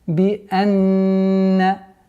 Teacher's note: Нун с удвоением. И поэтому назализация, полноценная назализация в размере двух огласовок.